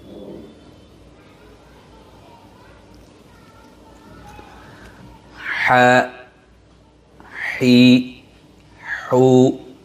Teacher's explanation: 2 নম্বর মাখরাজ হলকের মধ্যখান হইতে আইন হা দুটি হরফ উচ্চারিত হয়।